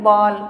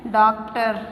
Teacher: उसका प्रयोग ओ और औ के बीच का होता है। उसका प्रयोग ओ और औ के बीच का होता है और उसका प्रयोग हम अंग्रेजी के शब्दों में ही करते हैं, तो उसे हम कहते हैं आगत स्वर।